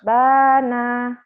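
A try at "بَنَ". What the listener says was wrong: Bana. Pendek. Bana.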